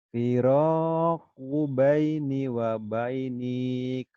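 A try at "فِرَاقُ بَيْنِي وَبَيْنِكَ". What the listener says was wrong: Pendek. Firaku baini wa bainik. Wa bainik. Lin. Nggak ada madnya. Kenapa pendek? Karena habis huruf linnya 2 huruf. Kalau 1 huruf baru panjang.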